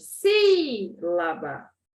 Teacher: Qual é a sílaba tônica? O si, né? É a mais forte. Sílaba. Olha o acento no i.